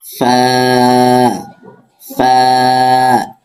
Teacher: নিচের ঠোঁটের পেট সামনের উপরে দুই দাঁতের আগার সাথে লাগিয়ে ফা উচ্চারিত হয়।